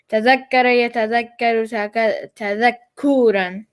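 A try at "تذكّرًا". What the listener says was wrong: Except don't make the ku so long. Tadakkuran. Tadakkuran.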